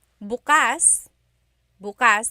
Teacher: If you say bukas, bukas, the emphasis is on the second syllable, that means open.